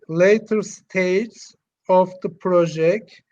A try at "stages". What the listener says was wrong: Did you think you said stages? Because it's not. It's. I don't hear the S at all. All I'm hearing is in the latter stage of the project. That's what it sounds like. It could be. It could be.